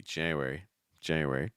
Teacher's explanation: Notice how weak the N sound is. It doesn't have to be like Jan-u-wary.